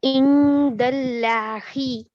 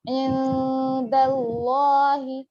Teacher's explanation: جی تنوین اور نون ساکن کے بعد اگر یہ 15 حروف میں سے کوئی بھی حروف ہے تو نون کی آواز کو ناک میں چھپانا ہے، کتنی دیر؟ 2 حرکتوں کے برابر اسے کھینچنا ہے، ایک الف کے برابر۔ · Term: اخفا